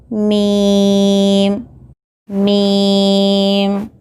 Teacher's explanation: मीम, होठों के खुश्क हिस्से से यानी सूखे हिस्से से अदा होता है